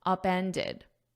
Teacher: So here I have it in the past simple, upended. Because it's in an ED, you need that id at the end.